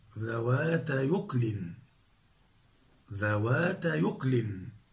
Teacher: فنحرك الياء اللينة الساكنة بحركة الهمز وهي الضمة، فتصير ذوات يكل. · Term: النقل